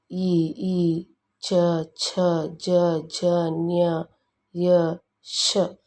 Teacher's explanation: ವರ್ಣಗಳೆನ್ನುತ್ತಾರೆ ಎರಡನೆಯದಾಗಿ ತಾಲೂಕ್ಷರಗಳು ಇ ಚ ಛ ಜ ಞ ಯ ಷ ಇವುಗಳು ತಾಲುವಿನ ಅಂದರೆ ದವಡೆಯ ಸಹಾಯದಿಂದ ಹುಟ್ಟುವುದರಿಂದ ಇವನ್ನು ತಾಲುವಕ್ಷರಗಳು ಎನ್ನುವರು